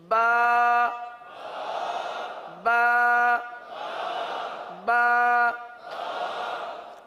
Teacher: یہ جو ہم حرف ادا کر رہے ہیں ایک الف تک کھینچ کے پڑھ رہے ہیں